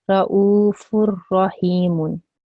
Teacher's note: Idgham kamil will take place here, and therefore how I will say this is ra'ufur rahimun. Okay, you can't hear the noon.